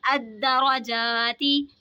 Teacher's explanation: रा पे ज़बर है, रा को मोटा पढ़ेंगे. अलिफ से पहले ज़बर है तो अलिफ मद्दा होगा.